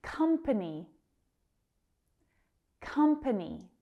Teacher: That stress is on the first syllable.